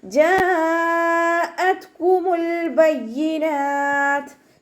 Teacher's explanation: ജാഅത്കുമുൽ ബയ്യിനാത്ത്, ജീമിൻ്റെ കൂടെ മദ് വന്നു. മദ്ദക്ഷരത്തിന് ശേഷം അതേ വേർഡിൽ തന്നെയാണ് ഹംസ വന്നിട്ടുള്ളത്. മദ് വാജിബ് മുത്തസിൽ 4-5 കൗണ്ട് നിർബന്ധമായിട്ടും നീട്ടിക്കൊടുക്കുക കേട്ടോ. ത സുക്കൂനാവുന്ന സമയത്ത് കുറച്ച് എയർ പാസ് ചെയ്യണം, സൗണ്ട് കൊടുക്കുക.